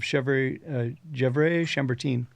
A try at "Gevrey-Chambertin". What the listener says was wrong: I don't know if you're saying that right, but I'll let the Psalms comment. Yeah, I think it's actually Gevrey Chambertin. Chamber with a hard ch.